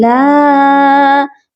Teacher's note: لام کے ساتھ الف ہے اور اس کے اوپر مد بھی ہے، اسی لیے ہم اس کو لمبا کر کے پڑھیں گے